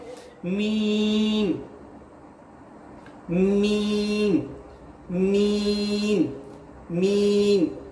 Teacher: दोनों होठों के बंद हिस्से से यानी बाहर के खुश्क हिस्से से अदा होता है